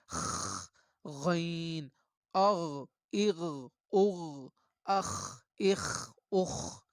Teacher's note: جہاں پر یہ آواز اس کی کھنکھناہٹ پیدا کرتی ہے تو یہ ادنائے حلق ہے